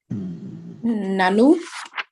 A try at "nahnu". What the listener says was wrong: Okay, let the air come out.